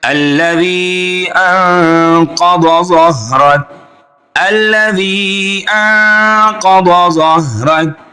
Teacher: انقض ظہرک، پھر اخفا ہو رہا ہے، آگے تینوں حرف موٹے ہیں